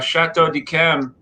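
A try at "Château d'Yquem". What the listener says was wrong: Chateau Yquem, not Dickem. Chateau Yquem.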